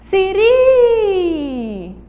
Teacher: A sílaba tônica é o RI